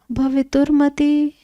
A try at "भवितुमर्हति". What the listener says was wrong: अर्हति होना चाहिए, भवितुमर्हति।